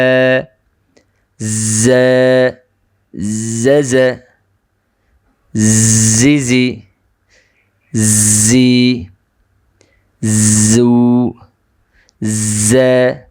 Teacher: জা হরফটি জিহ্বার অগ্রভাগ নিচের দাঁতের পেটের সঙ্গে লাগিয়ে উচ্চারণ হবে। উচ্চারণের সময় যে বিষয়গুলো খেয়াল রাখতে হবে, 1 নম্বর হলো জিহ্বা স্বাভাবিক থাকবে, উপরের দিকে উঠে যাবে না।